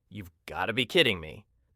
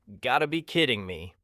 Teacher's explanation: Notice how got to becomes gotta in fast speech.